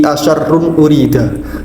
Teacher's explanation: Contoh bacaan izhar halqi bisa kita temukan pada lafaz wa anna la nadri asyarrun urida yang letaknya berada di awal ayat ke-10 dari Quran surat Al Jin. Di situ terdapat tanwin bertemu dengan hamzah, di mana hamzah termasuk salah satu dari huruf halqi atau huruf yang letaknya ada di tenggorokan. Sehingga lafaz tersebut dikategorikan sebagai salah satu contoh dari bacaan izhar halqi.